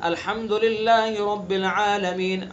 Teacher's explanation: عالمین میں مد اصلی ہے، ایک الف کھینچنا ہے